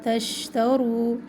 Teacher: تشترو شین میں پھیلنے کی صفت ہے